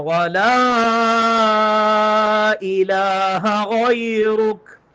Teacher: لا کے اوپر مد ہے، چھوٹی مد، کم از کم ایک الف کے برابر، زیادہ سے زیادہ تین الف کے برابر اس کو لمبا کرنا ہے